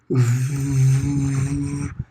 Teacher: É como se você fosse soprar a velinha do aniversário mas aí você faz como se fosse um som de v né você vibra a corda vocal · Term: bilabial